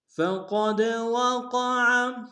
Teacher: ثم یدرکہ الموت فقد وقع، فقد میں قاف کو موٹا ادا کریں گے، دال کے سامنے آئیں گے، دال حروف قلقلہ سے قلقلہ کریں گے، وقع میں قاف کو موٹا ادا کریں گے، عین کو گہرے سے ادا کریں گے